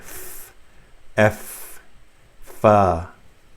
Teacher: you touch the front tip of the front teeth with the bottom lip and say f